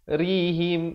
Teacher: ri di sini dibaca nipis, ra di sini berbaris bawah